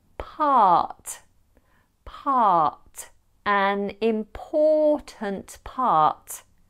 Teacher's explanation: We didn't pronounce the R in part or important. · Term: lack of rhoticity